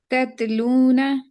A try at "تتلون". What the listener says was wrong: नहीं, यहाँ पे कलकला हो गया, तत।